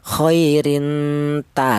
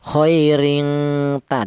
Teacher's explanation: Jadi apabila ada tanwin atau nun mati berjumpa dengan huruf to, dal, ta, maka dibaca ikhfa, yaitu ikhfanya ikhfa a'la. Bunyi vokalnya nn, yaitu samarnya lebih dominan daripada dengungnya.